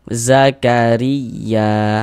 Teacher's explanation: Zakariya ya dibaca panjang mad thobi'i.